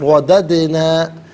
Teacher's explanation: ثم رددنا، را پر زبر ہے، را کو پر کر کے پڑھیں گے، اور وددنا میں دال ساکن ہے لیکن دال حرف قلقلہ ہے، تو سکون کے وقت آواز لوٹتی ہوئی محسوس ہونی چاہیے۔